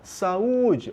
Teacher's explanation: Chama a palavra, saúde, olha onde se prolongou, no U, né? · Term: vogal forte